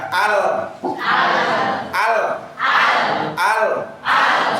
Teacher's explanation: sisi bagian depan lidah mengenai gusi gigi depan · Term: huruf lam